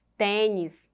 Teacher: ela é paroxítona porque ela é a penúltima sílaba mais forte